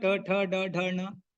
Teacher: All these letters have same place of articulation, which is danta, the teeth.